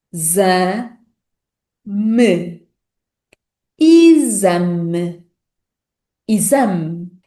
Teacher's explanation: O que contrasta com a última letra E da palavra isame, que é pronunciada como e, o que significa que na fala rápida esse som e vai tendencialmente desaparecer. Então, sílaba a sílaba, esta palavra é pronunciada como exame.